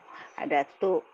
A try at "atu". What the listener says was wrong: Atu. Atu. Jangan tambahkan T, atut. Nah, atu.